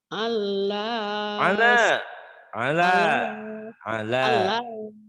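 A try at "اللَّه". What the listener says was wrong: Jangan Allah. Kalau Allah ada tasdidnya Ibu. Jangan ada tasdidnya ya Bu.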